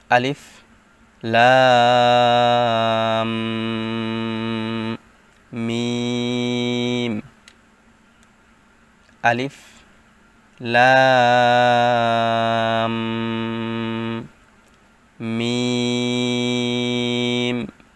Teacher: লাম বলার পর যখন মিম কে ধরবো তখন এখানে এক আলিফ পরিমাণ গুন্না করতে হবে